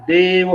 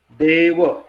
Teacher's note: हा आता ह्या ए च्या पुढे काय एकच कॉन्सोनंट आहे, व्यंजन आहे, म्हणून हा जो ए जो आहे हा दीर्घ समजला जातो. आणि बोलताना पण आपण याच्यावरती जोर देतो, देव, आहे की नाही, देव, म्हणून हा ए जो आहे इथे हा काय आहे, दीर्घ आहे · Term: दीर्घ स्वर